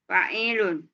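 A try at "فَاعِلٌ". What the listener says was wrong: Bacanya bukan i-nya yang panjang fa'ilun. tadi bacanya fa'ilun.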